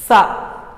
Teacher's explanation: जब हम बोलते हैं तो हमारे जीभ की जो आगे का भाग होता है नीचे वाले दांतों को स्पर्श करता है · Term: दंत्य ध्वनि